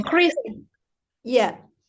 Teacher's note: s is voiceless. D-nya itu diucapkannya dengan t